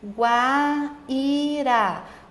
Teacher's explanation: O I está sozinho e tem um ditongo, mas o U é sua semivogal e o A é a sua vogal. Então, partiu de uma semivogal para uma vogal, o ditongo é crescente. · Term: ditongo crescente